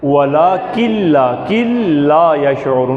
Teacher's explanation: وہ کاف لام سے مل رہا ہے، نون نہیں پڑھنا